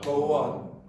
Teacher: you might hear an intruded w sound in the middle